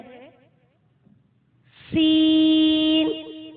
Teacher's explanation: زبان کی نوک سے جب اوپر اور نیچے کے اگلے دونوں دانت آپس میں ملیں تو اس سے سین ادا ہوگا۔ سین جب ادا کریں گے تو اس میں سیٹی کی آواز آئے گی